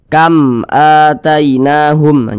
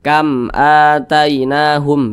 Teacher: Nah, maka hukumnya adalah izhar syafawi. Dibaca jelas, tidak berdengung, jadi baca pendek saja, jelas.